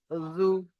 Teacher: জিভের আগা এবং সামনের উপরে দুই দাঁতের আগার সঙ্গে লাগিয়ে উচ্চারণ হয়